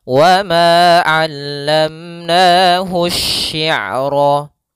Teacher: alif lam yang dia ditulis tapi dia tidak terbaca sehingga langsung ditasydidkan ke huruf setelahnya, yaitu pada huruf shinnya ditasydidkan. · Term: Alif lam syamsiyah